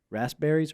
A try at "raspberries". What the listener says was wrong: Rasp. You got to get that P in there,